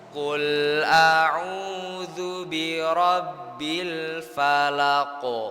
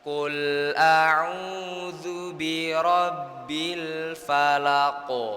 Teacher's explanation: Nah, kalau yang di sini itu huruf qo itu termasuk huruf tebal. Jadi, qalqalahnya juga harus ikut tebal, pantulannya harus tebal.